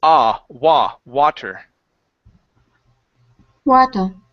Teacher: instead of saying W wo it's an a sound so open up your mouth nice and wide